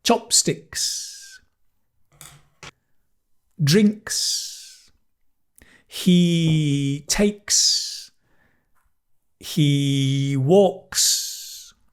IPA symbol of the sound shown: ks